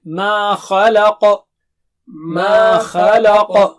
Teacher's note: ما خلق، ما مد ہے وہاں پر. اور خا، خا اونچا ہے، لام باریک ہے، اور قا پھر سے اونچا موٹا ہے، دونوں موٹے اونچے ہیں.